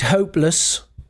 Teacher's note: Notice the pronunciation lus not less because it's not stressed.